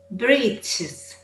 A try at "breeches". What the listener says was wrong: You have to bring the sound forward in your mouth. Bree, E. See where my tongue is? E, E. Breeches rather than breeches.